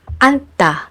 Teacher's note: in the combination of these two final consonant sounds, you only need to pronounce N.